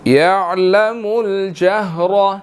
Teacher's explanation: جہر کے اندر را موٹا ہے, اس کے اوپر زبر ہے, ہم نے اس کو موٹا ادا کرنا ہے